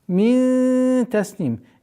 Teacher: Ихфа в размере назализации удерживаем в размере двух огласовок. При остановке танвин кесра аннулируется, уходит в сукун, и долгота в размере двух огласовок, вот она кесра.